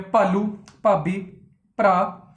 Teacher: ਥੋੜੀ ਡੂੰਘੀ ਆਵਾਜ਼ ਹਾਹੇ ਦੇ ਨਾਲ ਆ ਰਹੀ ਹੈ